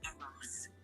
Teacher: The second battle is commonly pronounced Arras, with the emphasis on the first syllable and a soft S at the end. Kind of like Arras.